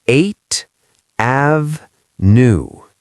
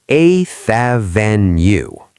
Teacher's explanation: when a native speaker says it, we connect the th directly to the a